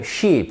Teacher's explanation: j'ai relâché ma langue, c'est un son dit lax, c'est-à-dire plus détendu